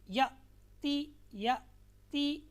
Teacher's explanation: اس میں حمزہ ساکنہ کو ہمیشہ جھٹکا دے کر پڑھیں گے۔